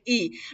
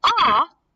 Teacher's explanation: if you say ah it's very low because we are opening our mouth